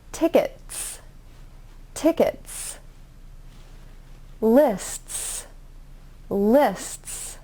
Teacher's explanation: when you add the s sound to the t you have to press your tongue more firmly to the top of your mouth and then release it into the s sound